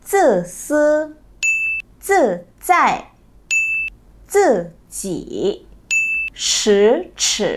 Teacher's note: tổ hợp âm zi, ci, zhi, chi, shi và ri kết hợp với vận mẫu y thì y sẽ được đọc thành ư. Nhớ nhá, nên nhiều bạn sẽ đọc thành vẫn đọc là y thì đó là cách đọc không chính xác.